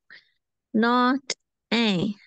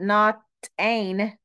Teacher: That's a nasalized N. It's not ain. It's not ain't. Don't put your tongue to the roof of your mouth when you say that nasal sound.